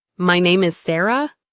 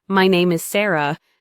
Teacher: A downward inflection, my name is Sarah, sounds clear and confident.